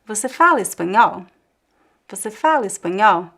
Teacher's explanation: This is the way that I ask questions. I raise the intonation twice.